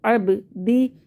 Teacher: با پہ قلقلہ ہوگا اور دال کو ہم نرمی سے پڑھیں گے